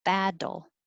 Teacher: those two T's sound like a D.